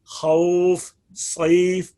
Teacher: تو اس میں مد عارض لین بھی ہیں، مثلا جیسے خوف، وہ واو جو ہے تو وہ حرف لین، لیکن حرف مدہ کی تشابہت کی وجہ سے اس کے اندر مد کی جاتی ہے ، تو اس کو اس کے بعد سکون پیدا ہو گیا، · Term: مد لین